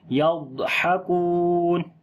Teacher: یضحکون، ضاد کے اوپر صفت موٹا کریں گے اور صفت استطالت بھی کریں گے، ہا کو گلے کے درمیان والے حصے سے پڑھیں گے، واو مدہ ہے لمبا کریں گے.